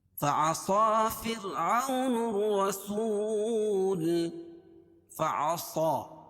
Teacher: فعصى صاد پر کھڑا زبر ہے، اس کو ایک الف کے برابر کھینچ کے پڑھیں گے، اور صاد کو موٹا پڑھیں گے کیونکہ حروف مستعلیہ میں سے ہے۔